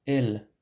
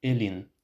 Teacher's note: Let's look at the genitive suffix, the equivalent of the English particle of. El, hand, with a front and unrounded e, becomes elin, of the hand.